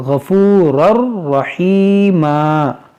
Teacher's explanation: یہاں پر بھی دیکھیں ادغام ہوگا، تنوین کے بعد را ہے اور بغیر گناہ کے